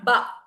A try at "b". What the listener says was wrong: No ah sounds, please. It's not ba.